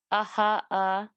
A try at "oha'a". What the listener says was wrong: So for baby, it's with the O, oha'a, oha'a. Yeah, oha'a. Or another pronunciation of baby was onga'a, sumai onga'a yate wana. Both of those are absolutely correct.